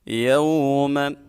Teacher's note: ما القاریعہ، یوم، واو ساکن سے پہلے حرف کے اوپر زبر آ جائے واو لین ہوتی ہے، واو لین کو ہم 1 الف کے برابر کھینچ کے پڑھتے ہیں